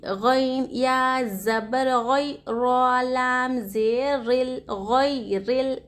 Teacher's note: रॉ के नीचे हरकत ज़ेर है, रॉ को बारीक पढ़ना चाहिए। · या साकिन से पहले हरकत ज़बर, यहाँ पर यालिन का क़ायदा हो रहा। ज़र्रा भी यालिन को नहीं खींचना चाहिए।